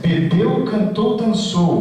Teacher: são palavras que tem a sílaba tônica forte na última sílaba